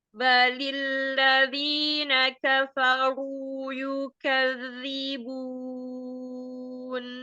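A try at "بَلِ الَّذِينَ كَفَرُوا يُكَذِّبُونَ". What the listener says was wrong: Nah, kafnya yang pertama sama kayak kaf kedua. Yuka, buka segitu ya. Jadi kafaru, yuka sama. Balilladzina kafaru yukadzibun.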